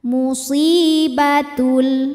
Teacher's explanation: sebab ada Ya Sukun didahului harakat kasrah cara bacanya Shad panjang dua harakat